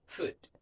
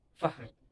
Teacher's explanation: The F sound made through the mouth and it is unvoiced, which means that you don't use your vocal cords to make the sound. It is defined by the position of your lips and teeth, and it's a fricative, which is a sound that is produced by high pressure airflow between a narrow space in the mouth.